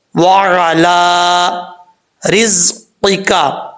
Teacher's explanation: زا سیٹی کے ساتھ پڑھا جائے گا کیونکہ حروف صفیریہ میں سے ہے